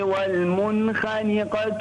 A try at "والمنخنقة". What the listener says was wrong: فخم الخاء، فخم الخاء. والمنخنقة والموقوذة والمتردية والنطيحة.